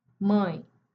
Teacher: Mãe, temos o a, o a nasalizado. A, mesmo sendo nasal, é uma vogal pura.